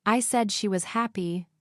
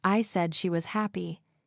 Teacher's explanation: In the first one, you're stressing, said. And in the second one, you're stressing, happy. Each sentence has a different feeling. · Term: contrastive stress